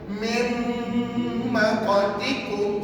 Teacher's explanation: Yang kita baca nanti adalah bunyi huruf mim yang bersatu. Nak sebut mim kita kena tutup bibir. Tengok bibir saya.